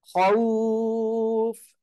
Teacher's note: লিনের হরফ দুইটি সাকিন ডাইনে জবর আর ইয়া সাকিন ডাইনে জবর লিনের হরফের পরের হরফে যদি আপনি ওয়াক্ফ করেন তাহলে তিন আলিফ টেনে পড়বেন